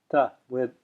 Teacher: the non-retroflex ta, ta, which is actually a dental ta, which does not have a dot underneath it.